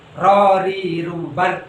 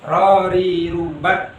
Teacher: Takrir ini mengulang, ya. Rorirubar tidak boleh terlalu banyak, hanya bergetar sedikit.